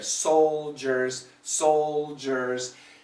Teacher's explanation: Soldiers, is there an L? Yeah, very small, but it is there.